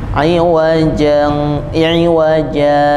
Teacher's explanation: iwaja dua harakat Berhenti sejenak baru kemudian tanpa mengambil nafas lanjut qima · gunakan yaitu menyambung antara dua ayat ayat 1 dan ayat 2 dengan cara berhenti sejenak atau saktah berhenti sebentar tanpa bernafas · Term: sakta wajib